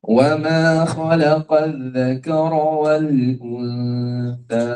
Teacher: huruf tha dan huruf zal, pastikan hujung lidah kita bersentuhan dengan hujung gigi atas